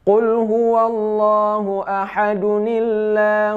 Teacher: karena tanwin ini dijadikan Nun kecil saat bertemu dengan Hamzah washal